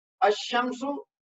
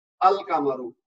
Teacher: अशमसु जब पढ़ेंगे तो लाम की आवाज नहीं आ रही, अल कमरू जब पढ़ेंगे तो लाम की आवाज आ रही है